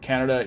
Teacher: when we aren't stressing it in just the word Canada it just becomes a schwa so it's reduced